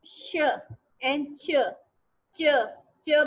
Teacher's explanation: जब आप च बोलेंगे तो आप देखेंगे ये जबान की जो टिप है ना, ये आपके पैलेट के साथ लग रही है। श बोले, शाउट, शाउट, तो आपकी जो जबान है वो पलट के ऊपर तालू पर लगेगी, तो इसको हम क्या कहेंगे कि दैट इज द पैलेटल।